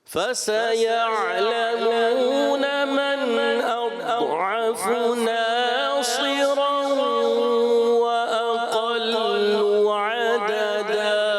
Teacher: من اضعف میں کلکلا نہ ہو. اضعف ٹھیک ہے اور ضاد کو پر بھی رکھنا ہے